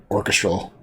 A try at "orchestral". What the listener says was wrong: Orchestral, yeah. He puts the wrong emphasis on the wrong syllable.